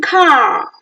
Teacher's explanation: is back, open, unrounded, long vowel. Oh, slightly round your lips.